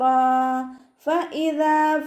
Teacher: ഫഇദാ ഹംസ നല്ലോണം ക്ലിയർ ആക്കി കൊടുക്കണേ. അഖ്സൽ ഹൽക്കിൽ നിന്നാണ് വരുന്നത്. അതിൻ്റെ സൗണ്ടിനെ വ്യക്തമാക്കിയിട്ട് ഉച്ചരിക്കുക.